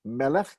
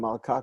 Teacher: Melech gets stressed on the first syllable. Malka gets stressed on the second, the last syllable.